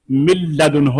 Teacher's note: ان میں سے کوئی حرف اگر نون ساکن اور نون تنوین کے بعد اس طرح آئے کہ نون ساکن اور نون تنوین پہلے لفظ کے آخر میں، اور حروف یرملون میں سے یا را یا میم لام واو نون میں سے کوئی حرف ان کے بعد آ جائے تو پھر نون پڑھا نہیں جائے گا، اگلے حرف کے اندر مدغم ہو جائے گا۔ جیسے مثال کے طور پر دیکھیں، من لدن ہو، من لدن ہو، من نون ساکن ہے، آگے لدن ہو لام آ گیا، اب آپ اس کو پڑھیں گے من لدن ہو، آپ کو نون کی آواز نہیں آئی۔